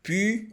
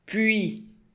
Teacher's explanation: você fala o I e faz o biquinho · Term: biquinho no U